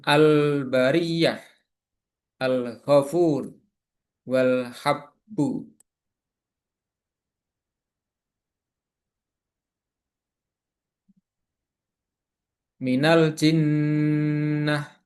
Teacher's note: Huruf-huruf alif lam qamariah ada 14 huruf hijaiyah yang ketika bertemu dengan alif lam, lamnya dibaca jelas. Hukum ini disebut juga dengan idhar qariyah. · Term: idhar qamariah